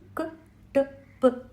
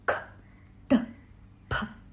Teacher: Alpaprana vyanjanams use less breath. For example, ka ta pa. And mahaprana vyanjanams use a higher amount of breath.